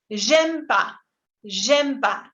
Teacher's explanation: Siempre tiene que existir en la parte escrita, pero al hablar tendemos a omitirlo y se dice j'aime pas, j'aime pas. En vez de decir je n'aime pas, es como si desaparece la E y desaparece la N.